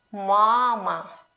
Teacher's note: So we say mama, not mama, but mama. First syllable is a little bit longer. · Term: stressed syllable